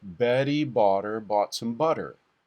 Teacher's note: the tapped R is what I like to use for that D like sound between two vowels when you're going from a stressed syllable into an unstressed syllable